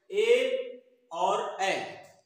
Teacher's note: ये दो ऐसे स्वर वर्ण हैं जिनका उच्चारण स्थान कंठ और तालु दोनों से होता है। ए, चूंकि ए बोलते हैं तो कंठ से भी शायद, चूंकि स्वर वर्ण है तो कंठ से उसका उच्चारण है, और चूंकि जीभ का स्पर्श तालु में होता है तो इसलिए कंठ और तालु दोनों स्थान पर जिह्वा का स्पर्श हो जाता है। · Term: कंठ तालु